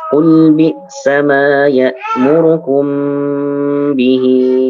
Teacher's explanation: Untuk mim sukun bertemu dengan ba ditahan ya.